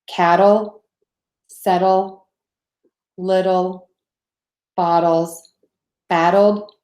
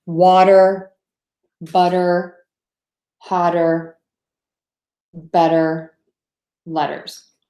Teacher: this crazy flap T when the T sound sounds more like a D